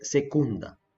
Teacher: акцентот ќе паѓа на самогласката, на втората самогласка одназад